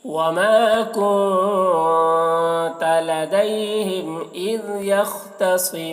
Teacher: اذ میں دال کو باریکی کے ساتھ ادا کرنا ہے اور قلقلہ نہ ہونے پائے اس کا خیال رکھنا ہے